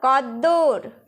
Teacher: স্বরতন্ত্রী বা আমাদের যে কণ্ঠ নালী রয়েছে সেখানে কিন্তু কম্পন সৃষ্টি হচ্ছে এই কদ্দুর উচ্চারণ করার ফলে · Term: ঘোষ ধ্বনি